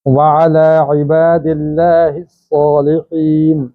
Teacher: لفظ اللہ کے لام کو ہم باریک پڑھیں گے پیچھے زیر ہونے کی وجہ سے